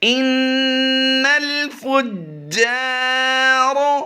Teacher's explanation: نون مشدد میں ہمیشہ غنہ کرتے ہیں، یہاں پر غنہ ہوگا، اور جیم حروف قلقلہ سے ہے، یہاں پر قلقلہ جماؤں کے ساتھ ہوگا، کیونکہ حروف قلقلہ مشدد ہوں تو ان میں قلقلہ جماؤں کے ساتھ ہوتا ہے۔